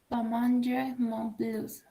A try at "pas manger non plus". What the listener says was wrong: La S no se pronuncia directamente manger non plus.